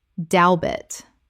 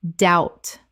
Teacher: The b is completely silent. It rhymes with out and shout.